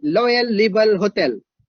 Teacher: in Thailand, they don't have ra sound, ra. If I say Royal River Hotel, they say Loyal River Hotel.